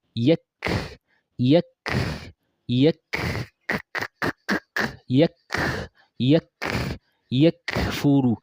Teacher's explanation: I did not say yaq yaq. That would be qaf. I said yak, which means I've already moved forward a bit. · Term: kaf